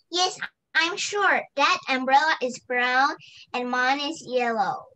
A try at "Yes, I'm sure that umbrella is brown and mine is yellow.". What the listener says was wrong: ▁那 个 有 说 有 ▁S ▁的 要 ▁pronounce ▁个 ▁S ▁出 来 哈 。That's ▁哈 。What's ▁your ▁favorite ▁color?